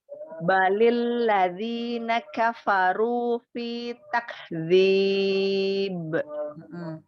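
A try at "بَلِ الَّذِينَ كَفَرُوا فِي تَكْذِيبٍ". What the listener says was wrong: Tak. Berikan syiddahnya dulu. Tak. Baru hamesnya ya, karena kaf memiliki sifat hames. Takdzib. Runya ditebalkan lagi.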